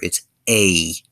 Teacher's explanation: we have a diphthong, which is EI, and it's much longer